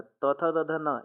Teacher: त थ द ध न यह दंत होता है